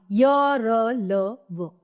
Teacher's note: इन व्यंजनों का उच्चारण स्वर तथा व्यंजन के मध्य का सा होता है। ठीक है, उच्चारण के समय जिह्वा मुख के किसी भाग को स्पर्श नहीं करती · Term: अंतस्थ व्यंजन